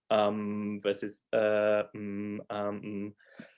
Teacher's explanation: i did that m sound so my lips closed